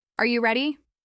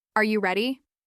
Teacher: Notice how your voice lifts at the end, as if you're reaching toward the person you're asking. That simple change in pitch makes it clear that you're asking something. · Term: rising intonation